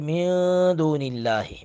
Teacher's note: لام لفظ جلالت کے لام کو باریک پڑھیں گے اس لیے کہ لام سے پہلے زیر آئی ہے